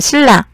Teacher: 니은이 리을로 바뀌었잖아요. 유음으로 바뀌었잖아요. 그러니까 유음화 현상이고 뒤에 있는 리을의 영향을 받아서 앞에 게 바뀌었으니까 역행동화.